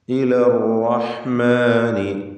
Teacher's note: ഇലർ റഹ്മാനി, റാ തഫ്ഖീം ചെയ്യണം. എന്നാൽ തക്രീർ എന്ന സിഫത്ത് അതിന് പ്രത്യേകമുള്ളതാണെങ്കിലും ഷദ് നൽകി ഉച്ചരിക്കുമ്പോൾ കൂടുതൽ തക്രീർ വരാതെ സൂക്ഷിക്കേണ്ടതാണ്. അർ എന്ന് വിറപ്പിക്കരുത്.